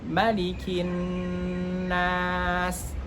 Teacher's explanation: Di sini tidak boleh huruf ma-nya panjang 2 harokat.